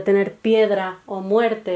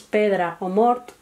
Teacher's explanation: Esta lengua catalana tiene aproximadamente unos 6 millones de hablantes y sobre todo podemos destacar rasgos como que la E y la O no han diptongado, en vez de tener piedra o muerte, lo que tenemos es pedra o mort.